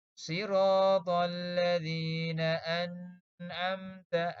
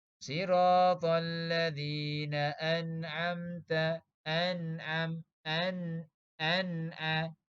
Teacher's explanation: Ni nun mati ataupun nun sakinah bertemu dengan ain. Jelaskan bunyi nun sakinah. Jangan dengung. Kalau kita baca terlebih sedikit, dia akan jadi dengung.